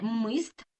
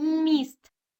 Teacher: Так, ми чуємо не мист, а міст. Промовляємо м'яко. Тому це в нас буде м'який приголосний м.